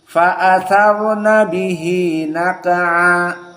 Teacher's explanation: so ra here mufahhamah because before ra as-sakinah is fathah, maka dibaca dalam keadaan tafkhim